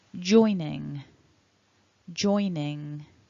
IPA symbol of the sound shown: ŋ